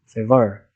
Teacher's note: articulated by using both the lower lip and the upper front teeth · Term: labiodental